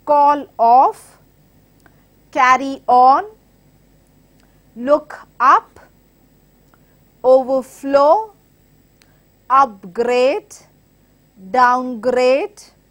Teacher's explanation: we are stressing on the second part of the word because of its verb meaning, because of the function of the word which acts as an action word.